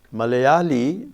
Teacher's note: the last li is a heavy syllable, but it's not stressed